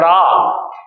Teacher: जब आप रा का उच्चारण करेंगे तो आप देखेंगे कि आपकी जीभ लगातार कंपन कर रही है, लुढ़क रही है। तो इसलिए रा को प्रकंपित भी कहते हैं, रा को लुंठित भी कहते हैं और रा को कंपन जात भी कहते हैं, जो कंपन से पैदा होता हो।